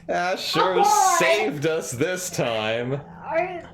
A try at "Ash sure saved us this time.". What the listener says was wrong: No, it sounded like Asher shaved us this time.